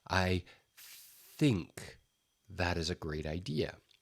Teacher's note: And so if you take the tips of your two fingers and you put them along your vocal cords like this, and you say the word, I think that is a great idea. That TH is a voiceless sound. There is no vibration coming from your vocal cords. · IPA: θ